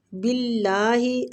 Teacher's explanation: اللہ کی لام کو باریک پڑھیں گے کیونکہ پیچھے والے حروف پہ کسرہ ہے